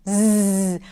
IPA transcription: z